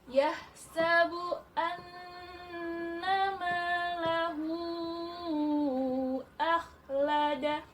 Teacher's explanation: Anna, nun ini tasydid, maka bacaannya dengung sampai 3 harakat.